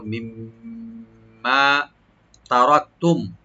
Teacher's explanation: দ্বিতীয় মিম যেটা আছে এটা মুসাদ্দাদ, গুণনা করে একালে পরিমাণ টানবো · রাটা একটু মোটা হবে, আর কাপ একটা হামস করবো , আর মিম সাকিন এখানে আমরা জাহার করবো, তারাকতুম, মিম্মা তারাকতুম